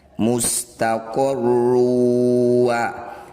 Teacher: Cara bacanya bunyi dhammah tanwin masukkan pada huruf waw. Dengungkan 2 harokat. Ketika dengung posisi bibir sudah mencucu. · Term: idgham bi gunnah